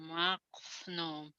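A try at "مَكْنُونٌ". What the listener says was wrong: Ujungnya. Ujungnya N.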